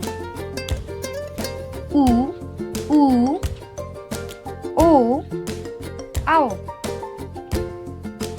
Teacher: इन वर्णों का उच्चारण स्थान भी ओष्ठ ही है, अतः इन्हें हम वृत्तमुखी स्वर में रखेंगे।